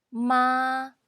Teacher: when a car is driving straight forward it's tone one or say high tone